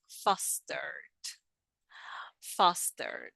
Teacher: the e is mute and we just pronounce the d, fostered